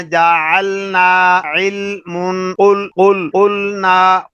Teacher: ہماری زبان اوپر والے سامنے والے جو دانت ہیں 8 دانت، وہاں کے مسوڑوں کے ساتھ جب چپکتی ہے تو وہاں سے لام ادا ہو رہا ہے